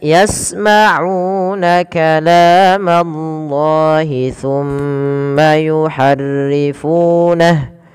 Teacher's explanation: kalamallah la panjangkan dua harakat karena dia Mad tabi adanya fathah bertemu dengan alif kecil